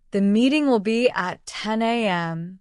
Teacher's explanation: The stress on meeting is a clue that it's important.